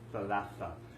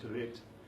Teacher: In dialect, the th changes to a t, and you get rid of all those extra vowels, and it simply becomes talet, or talete in feminine form.